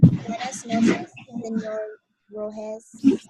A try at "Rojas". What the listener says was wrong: Rojas. Okay, make sure you sound that A. Rojas.